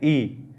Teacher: आप देखिए ई बोल के देख लीजिए, ई इसके अंदर मुख है वो न के बराबर ही खुलता है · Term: संवृत स्वर